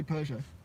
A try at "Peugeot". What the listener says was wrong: Peugeot. yeah, but you put an R in it. But you're calling it a Peugeot. There's no R in Peugeot.